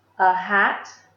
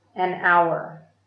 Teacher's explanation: hat begins with a consonant sound, h, but hour begins with a vowel sound because the H is silent